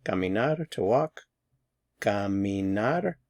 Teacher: The stress is on the final syllable here. Caminar. For infinitives, AR infinitives, the stress is on the final syllable.